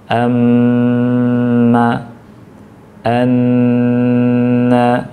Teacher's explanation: mim bertasydid dan nun bertasydid tadi dibaca ditahan ya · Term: gunnah